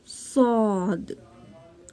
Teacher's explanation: زبان کی نوک اور اوپر نیچے کے دونوں دانتوں سے ادا ہوتا ہے